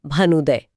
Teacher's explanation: भानु का छोटा उ और उदय का छोटा उ दोनों मिलकर बड़ा उ बन गए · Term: दीर्घ संधि